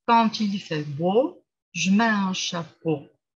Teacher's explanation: Et ce qui est aussi souhaitable de le présenter comme ça, parce que justement, vous avez Un groupe rythmique en entier, et la dernière syllabe, c'est la syllabe accentuée. Donc, on va légèrement prolonger.